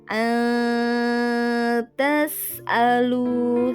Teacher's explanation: maka harus dibaca samar di antara bacaan izhar dan idgham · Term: ikfa hakiki